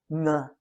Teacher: The ng sound is pronounced with the tongue against the back of your throat.